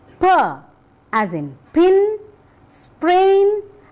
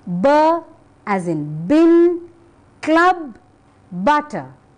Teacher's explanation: both p and B are pronounced by putting your lips close together · from the mouth whereas the second one from the throat so p is voiceless and B is voiced